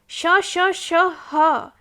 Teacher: ईषद् विवृतम् ऊष्माणाम्। एवमेव ऊष्माणां श श श ह इति वर्णानां प्रयत्नः ईषद् विवृतम्